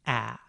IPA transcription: æ